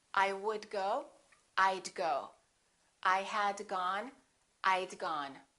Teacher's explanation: I would and I had sound exactly the same when they're contracted they both sound like ID I would go I'd go I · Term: contracting the word would